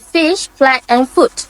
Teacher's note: place your upper teeth lightly on your lower lip and push air through without using the vocal cords. It's like blowing air through your teeth. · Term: F sound